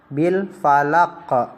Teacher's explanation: Coba kalian lihat huruf qaf. Qaf itu dibaca qalqalah, artinya memantul